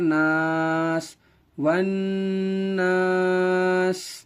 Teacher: یہاں الف سے پہلے زبر ہونے کی وجہ سے الف مدہ ہے, الف مدہ کو تھوڑا کھینچ کر پڑھیں گے